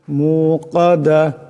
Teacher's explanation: এখানে বড় কাফ আছে, আওয়াজটা গলা থেকে আনতে হবে